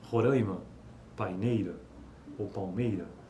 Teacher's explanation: A pronúncia nasalizada dos ditongos decrescentes seguidos de consoantes nasais em palavras como Roraima e paineira é típica da região de Belo Horizonte